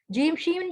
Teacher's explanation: جیم شین یا middle of tongue یعنی زبان کی وسعت سے ادا ہوتے ہیں